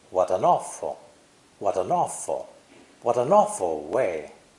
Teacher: The other words are unstressed, spoken lightly and quickly. There's linking between what and awful.